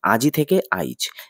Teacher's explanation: আজ যোগ ই কিন্তু অপিনিহিতির ফলে হলো আইজ আই যোগ জ দেখা যাচ্ছে শব্দের শেষে অবস্থিত ই শব্দের মধ্যে স্থানান্তরিত হয়েছে